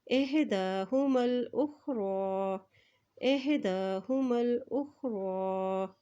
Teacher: را کے اوپر کھڑی زبر ہے تو اس کو ایک حرکت لمبا ادا کریں گے · میم کی زبر کو لام کے ساتھ ملائیں گے، لام کے اوپر دیکھیں جزم ہے · ساتھ ملائیں گے، لام کے اوپر دیکھیں جزم ہے، اس طرح حمزہ کی پیش کو خا کے ساتھ ملائیں گے، خا کے اوپر بھی جزم ہے